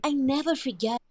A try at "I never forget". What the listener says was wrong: Yeah, there's a very subtle R in there, but you can make that stronger.